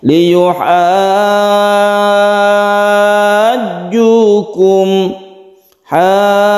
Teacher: Musaqqal itu artinya diberatkan karena adalah bertasydid, maka kita beratkan membacanya, kita panjangkan dulu baru kita tekan ke jimnya atau tasydid jim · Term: mad lazim musaqqal kilmi